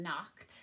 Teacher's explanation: the ED doesn't say ed, it says t when we're saying knocked